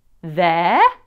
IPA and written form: ðeə (there)